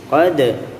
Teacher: ini juga huruf dal termasuk huruf qalqalah, maka kita pantulkan ya, sama dengan huruf ba, rileks aja.